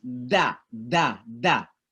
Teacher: ujung lidah kita menyentuh gigi belakang bagian atas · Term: huruf d